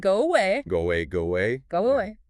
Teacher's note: Because your lips are already rounded for go, it's natural to add that W to bridge the gap to away. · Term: W sound